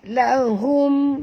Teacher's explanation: Ya, mad wajib. Lahum, ha di sini ha simpul, jadi bunyinya daripada halqum